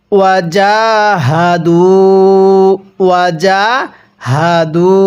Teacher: এই জিমের মধ্যে আমরা এক আলিফ টেনে পড়ব, কারণ হরফের উপর খাড়া চিহ্ন এক আলিফ টানতে হয়।